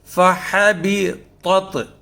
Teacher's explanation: تو طا اور تا جب ایک جگہ آتے ہیں تو ہم نے فرق کرنا ہے دونوں میں، کہ دونوں کی آواز الگ سے نکالنی ہے، اس لیے کہ طا پر ہے اور تا باریک ہے